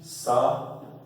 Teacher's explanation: Porque o hiato, e a tônica aqui, é na vogal U.